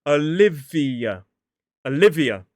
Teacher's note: Four syllables, stress on the second. And this actually has two schwas /ə/ in it. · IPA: /əˈlɪviə/